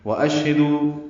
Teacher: واو ہونٹوں کی نا تمام گلائی سے ادا ہوگا ، شین ساکن پہ ہمس ہے، تفشی ہے، دو و مدہ